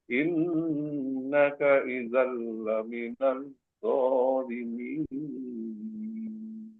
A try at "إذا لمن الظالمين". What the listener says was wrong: Laminalnya jangan, ini samsiah, jadi langsung ke huruf zo. Lam, alif lamnya tidak dibaca. Lamin.